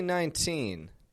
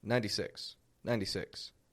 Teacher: I reduce that T, make it a flap T, and just let it flow out